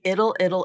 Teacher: But what sometimes happens when you have a dark L with a schwa in front of it, the dark L just kind of absorbs that schwa and the schwa goes away. And so you have this, it's called syllabic consonant.